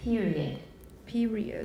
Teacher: the final consonants are not fully voiced throughout the closure